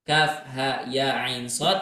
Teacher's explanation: ketika antara huruf Ain ingin ke huruf shadnya maka berikan gunah di sana Maksudnya gunah apa suara hidung gitu ya diberikan suara dengung sedikit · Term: gunnah